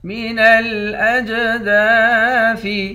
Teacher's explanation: حمزے کو جیم کے ساتھ ملا کر جیم پر قلقلہ کریں گے، جیم حروف قلقلہ میں سے ہے